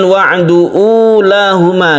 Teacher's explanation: di sini ada sukun wawu yang kita baca sebagai mat tabi'i, dia dipanjangkan